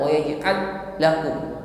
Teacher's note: Jadi ketika ada dua huruf yang sama, yang pertama bersukun, maka mengucapkannya adalah wa yaj'al, lam pertama langsung kita tekan masuk pada huruf lam yang kedua, tidak perlu disentak. Wa yaj'al lakum, jadi masuk langsung jadi satu. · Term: idgham mutamatsilain